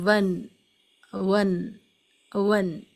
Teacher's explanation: جو hard پیلٹ ہے وہاں سے زبان کی نوک کو ٹچ کرنا ہے، تو یہ کلیئر ساؤنڈ آف نون کہلائے گی